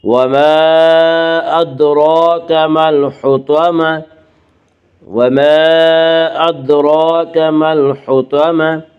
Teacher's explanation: جب اس گول تا پر وقف کریں گے تو گول تا وقف کی صورت میں ہائے ساکنہ بن جاتی ہے